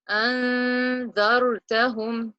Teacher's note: I'm going to hide the Noon from my mouth and put it in my nose for 2 counts. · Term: Ikhfa